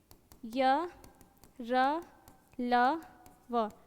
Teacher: इनको अंतस इसलिए बोला जाता है क्योंकि इनको जब हम बोलते हैं ना तो हमारा जो जीभ है ना वो बाकी चीज़ों से बहुत कम मात्रा में टच कर रहा होता है, इसलिए उसको क्या बोलते हैं, अंतस बोलते हैं।